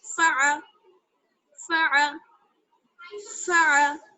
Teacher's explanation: تو فا پر بھی حرکت لگی ہوئی ہے زبر کی اور عین پر بھی حرکت ہے، تو بنا کھینچے جلدی سے ادا کریں گے